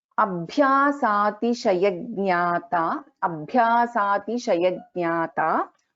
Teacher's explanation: Bha is a Mahaprana in this.